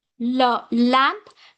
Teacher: air flows around the sides of the tongue